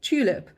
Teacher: the tu already has lip rounding · So we don't say tulip, we say tulip, and the t already has lip rounding anticipating the u in tulip. So that's a very typical example of coarticulation in speech.